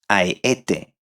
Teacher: the emphasis will be placed in an ascending way, the last one being the most stressed